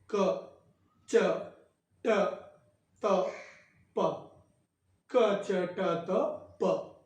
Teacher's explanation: जिन्हें बोलने में स्वर वायु कम से कम हमारे कंठ से बाहर निकलती है। कम निकलने के कारण अल्प प्राण, बहुत कम मात्रा में प्राण वायु का प्रयोग होता है, इसीलिए अल्प प्राण।